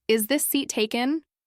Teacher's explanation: When you ask, "Is this seat taken?" with a rising tone at the end, it sounds polite, respectful, and curious. When you say it flatly, it can sound bored or even a bit cold.